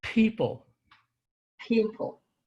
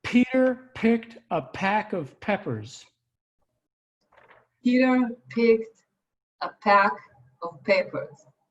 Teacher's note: it always has a puff of air